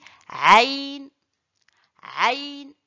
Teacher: Le aïn sort du milieu de la gorge.